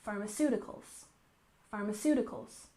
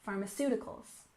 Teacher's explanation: It can be referring to medication that you get from a pharmacy, or it can refer to the industry which produces the medication. And we put the stress here on the third syllable